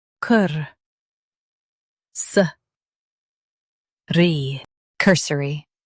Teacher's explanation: Emphasize cur and keep suh quick.